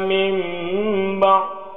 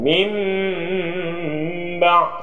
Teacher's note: Ini hukumnya adalah iklab, menukarkan suara nun mati ke dalam mim mati dan didengungkan. Mim ba, seolah-olah ada ba.